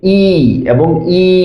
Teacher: জিহ্বা যখন একদম উপরে থাকে এই অবস্থায় হচ্ছে যে ধ্বনিগুলো উচ্চারিত হয় সেটা হচ্ছে ই এবং ই, হ্রস্ব ই এবং দীর্ঘ ই।